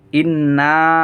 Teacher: নুন এর উপর তাসদিদ, গুন্না করা ওয়াজিব।